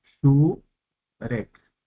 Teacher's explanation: el acento recae sobre la primera sílaba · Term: sílaba acentuada